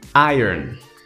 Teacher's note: como se tivesse pronunciando duas palavras que são I mas daí você vai fazer um ataque forte na primeira sílaba e falar tudo rápido